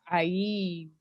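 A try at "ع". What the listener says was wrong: Don't worry about the Y too much. Don't if it's an I helps you, don't emphasize the Y too much. Ain. Ain.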